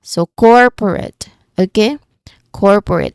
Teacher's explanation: the main stress is in the first syllable, core.